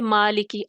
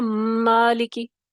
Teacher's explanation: متحرک میم کو عدم غنہ کے ساتھ پڑھا جائے گا